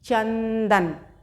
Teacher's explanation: ना की ध्वनि सुनाई पड़ी ना, चा के और दा के बीच में